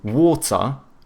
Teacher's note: Whereas like the British, they tend to have either hard T's or they do like the glottal T, so but then they do a schwa instead of pronouncing the R